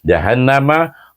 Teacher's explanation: nun bertasydid dibaca dengan wajibul gunnah. Jahannam mesti dua harakat. Kalau tak dua harakat tak jadi dia punya dengung itu.